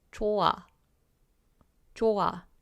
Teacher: If you have a hiet, the hiet doesn't really get pronounced as harshly as we do in English.